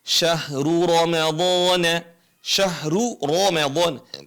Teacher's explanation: jadi ketika domah dan fathah dibaca tebal